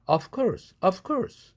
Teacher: v가 course 할 때 크 사운드 무성음의 영향을 받아서 v가 아퍼지 컨소넌트인 무성음 f로 바뀐다. 그래서 of course가 of course 이렇게 발음한다.